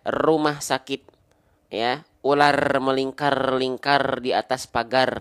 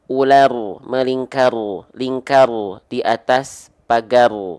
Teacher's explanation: Tapi kalau huruf ro itu getarannya sedikit tapi walaupun dia getarannya sedikit tetap tegas lugas dan jelas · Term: takrir